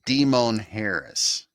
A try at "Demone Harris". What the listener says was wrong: A slight extra emphasis there, but I think it's good.